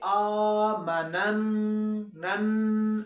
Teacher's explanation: کیونکہ ہم لوگوں نے سیکھا تھا کہ نون مشدد پر ہم لوگ کیا کرتے ہیں، خشون کرتے ہیں، آواز کو ناک میں لے کر جائیں گے۔